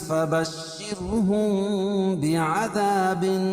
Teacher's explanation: میم ساکن کے بعد با آئے تو اخفاء شفوی ہوتا ہے.